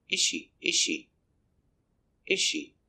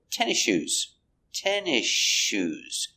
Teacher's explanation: you don't hear the S before the sh